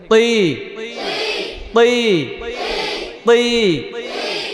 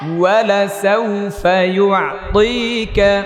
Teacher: এটা ত নাকি তা? মোটা করেন তি।